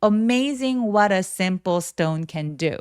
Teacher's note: 계단식으로 톤이 조금씩 내려오시면 훨씬 더 자연스럽게 얘기하실 수 있습니다